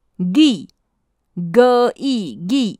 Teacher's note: 台罗的写法是▁g，▁这个音是由喉咙发出混浊的音。